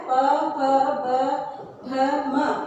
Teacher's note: प, फ, ब, भ, म, इनका उच्चारण स्थान क्या होगा? ओष्ठ।